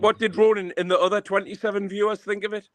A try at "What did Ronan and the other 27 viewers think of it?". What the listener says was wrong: What's wrong with your mouth? You're doing that lisp again. You come on and you're doing a lisp. You're doing a Toya Wilcox.